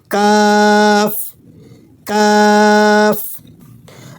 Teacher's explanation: قوف، قوف۔ کاف، کاف زبان کا پچھلا حصہ اوپر تالو سے لگا کر ہلکی آواز میں پڑھیں گے